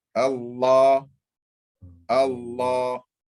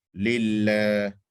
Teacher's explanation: In Allah, it's full mouth. In lillah, empty mouth. So really, the secret is not in the positioning of your mouth.